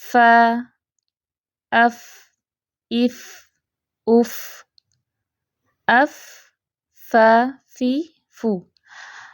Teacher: فا کو تھوڑا سا لمبا کر کے پڑھتے ہیں۔ جب ہم بطور حرف پڑھ رہے ہوتے ہیں حروف الہجا میں جیسے ہم پڑھتے ہیں تو تھوڑا سا لمبا کر کے پڑھیں گے۔ · جب اوپر کے سامنے والے 2 دانتوں کے سرے نیچے والے ہونٹ کے درمیانے گلے حصے کو لگیں تو حرف فا ادا ہوتا ہے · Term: فا کا مخرج